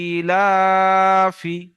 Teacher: হামজার নিচে খাড়া জের এসেছে, খাড়া জের ইয়া মাদ্দার সমতুল্য, সুতরাং খাড়া জেরকে একালি পরিমাণ টান দিয়ে পড়তে হবে।